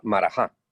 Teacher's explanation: aparece con el acento en la última A.